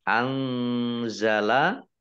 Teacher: Nun sukun bertemu dengan huruf za, ikhfa, ya dibaca samar-samar.